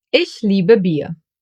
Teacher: I-E will be pronounced like a long, slow E, like for example in cheese. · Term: Another German diphthong